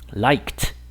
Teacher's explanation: Entonces esta terminación de ed va a sonar más bien como una t.